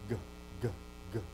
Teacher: the back of the throat is closed at the soft palate